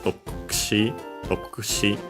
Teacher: the U of Doku, of the Ku, should be barely heard if at all, because it's between a voice consonants.